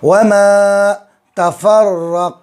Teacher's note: را پر تشدید ہے، 2 مرتبہ پڑھیں گے، ایک مرتبہ فا سے ملائیں گے، ایک مرتبہ خود سے۔ لام پر تشدید ہے، الف پر کوئی نشانی نہیں تو لام کو قاف سے ملائیں گے۔